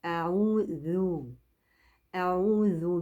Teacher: لازم لساني يطلع في حرف الذال مع ترقيق الذال